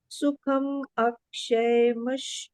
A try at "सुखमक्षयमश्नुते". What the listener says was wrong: या, हम बोलते हैं कि जैसे बताया ना, सुखम में माँ, जो सुखम में सुख माँ जो है हलंत वाला है, आधा माँ है, पूरा नहीं है। लेकिन अक्षय का, अक्षय एक तो क्षय है और एक अक्षय है। अक्षय का अ जो है वो जब माँ हलंत के साथ में लगता है तो माँ पूरा हो जाता है।